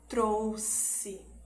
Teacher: ele vai ter o som de s duplo né que é um pouquinho mais longo